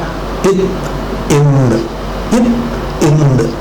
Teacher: மேல்வாய் பல்லினுடைய அடியை நாக்கின் நுனி பொருந்துவதால் பிறக்கும்